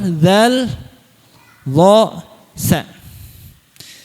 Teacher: Ujung lidah bertemu dengan ujung-ujung gigi seri atas nanti keluar zal, zha, tsa. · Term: lasawiyah